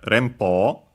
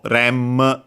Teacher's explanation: Notice, first and foremost, OU, pronounced as actually long O, Po, and also the N before the Po, because Po has the P consonant, so a bilabial consonant, N becomes actually the bilabial nasal M